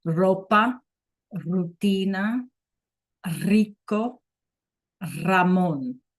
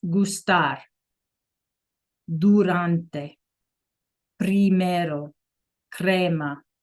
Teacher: they call it a trill, right? Where you like roll your R a little bit. Ropa, rutina, rico, Ramon.